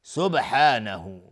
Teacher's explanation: با قلقله میخواد اینجا چون ساکنه